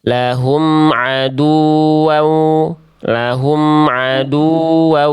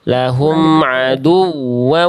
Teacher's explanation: wau yang ada tasdid asli namanya nih maka dia dibaca harus nabr